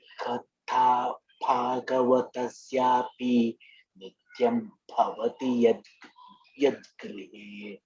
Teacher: with the th nice Mahaprana and bha nice Mahaprana.